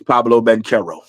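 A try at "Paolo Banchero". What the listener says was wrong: Man, you know it really irks me when you put a B on his name.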